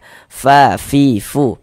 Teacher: Wa ata'na ghufra. Huruf fa, kalau kita membaca huruf fa itu ada nafas yang mengalir ketika kita mengucapkannya.